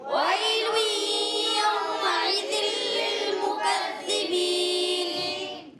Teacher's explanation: یا ساکن سے پہلے زبر، یالین ہوگا، نرمی سے ادا کریں گے